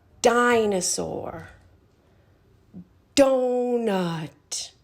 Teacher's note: when we make the sound our tongue is tapping the top of our mouth